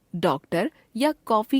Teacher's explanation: शब्दों में आने वाले औ स्वर के उच्चारण पर ध्यान दीजिए इसके उच्चारण में ओठ हिंदी के ओ स्वर के उच्चारण से कुछ अधिक गोल होते हैं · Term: आगत स्वर